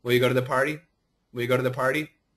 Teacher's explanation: my lips are closed but the first sound I'm making is a w even though it's short